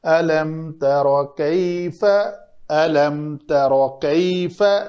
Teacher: تا کو پتلا کر کے را کو پر پڑھیں گے۔